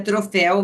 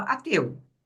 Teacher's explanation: ela sabia que ela tinha que falar fé no som aberto